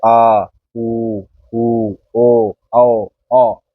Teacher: इन स्वरों को बोलने में हमारी जीभ का पिछला जो भाग है वो काम करता है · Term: जीभ का पिछला हिस्सा